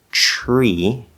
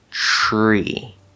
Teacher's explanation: it's spelled t-r-e-e but it's actually pronounced c-h-r-e-e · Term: t plus consonant r